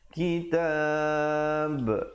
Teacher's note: diwakafkan dengan memberikan pantulan pada huruf ba. Walaupun huruf ba itu hidup, kita ba, tapi bila kita wakaf, dianya menjadi mati mendatang. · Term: qalqalah kubra